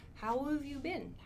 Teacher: so we're connecting this v sound to how how have you been how have you been sounds much better